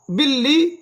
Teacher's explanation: با لام زیر بل لام زیر لی بلی. تشدید والا حروف ہے, 2 دفعہ ادا کریں گے. با کو لام کے ساتھ ملائیں گے.